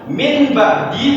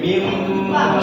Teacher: suara nun sukun dan tanwin atau tanwin berubah menjadi suara mim, seolah-olah ada mim di sana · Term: iklab